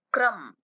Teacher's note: र में अ मिलाकर बोलना है, क्रम, और क को जल्दी से बोलना है क्योंकि वो आधा है